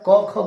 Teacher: ये सारे के सारे वर्ण है कंठी वर्ण यानी इन वर्णों का उच्चारण कंठ से होता है